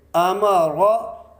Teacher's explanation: یہاں را کے اوپر زبر ہے تو ہم اس کو موٹا پڑھیں گے